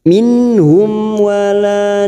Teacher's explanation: Selain bertemu dengan 2 huruf ini dibaca jelas seperti ini. Mim sukun bertemu waw yang selain kedua huruf ini, namanya bacaan idhar safawi, dibaca jelas tanpa mendengung.